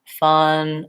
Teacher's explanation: a very relaxed vowel with a mid jaw and no lip rounding and a lax tongue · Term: schwa vowel